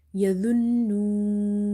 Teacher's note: noon is having nasalization because there is a shadda on top of it